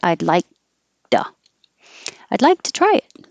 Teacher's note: I'm not going to release the K.